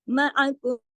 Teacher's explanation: मुसद्दिक़ल लिमा मअकुम, माकुम जब पढ़ेंगे तो आगे मीम साकिन के बाद मीम मुशद्दद है तो यहाँ गुन्ना होगा और क्योंकि इदगाम हो रहा है ना, माकुम इस तरह गुन्ना होगा न।